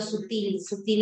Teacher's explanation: sutil es aguda no se dice sútil